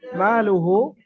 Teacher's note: আর হ্যাঁ মালুহু ইযা তারাদ্দা, মালুহু, মিম আলিফ জার, আলিফের ডান দিকে মিমের উপর যাবার আলিফ মাদ্দা এক আলিফ পরিমাণ, মিমকে টান দিয়ে পড়তে হবে